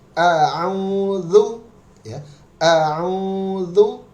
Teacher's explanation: Huruf ain kita lihat tidak ada unsur hidung sama sekali. Dia hanya di tenggorokan.